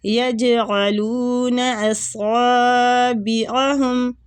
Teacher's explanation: سواد کو پور پڑھنا ہے، مستعلیہ حروف ہے اور اس کو کھینچنا بھی ہے